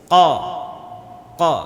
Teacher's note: Ketika membaca huruf qaf ini makhrajnya, tempat keluarnya di pangkal lidah kita, di lidah bahagian belakang. Dan di antara sifat huruf qaf itu harus tebal dibacanya.